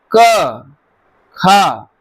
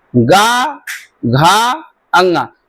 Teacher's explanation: का और खा में उच्चारण में रिलैक्स है तो अघोष है, और गा घा अंगा के उच्चारण में थोड़ी कर्कशता है।